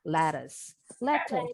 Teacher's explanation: T-nya bunyinya kayak D cepat. In American English.